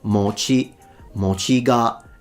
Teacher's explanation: it's a heiban pattern, so one of those low to high pitches in Japanese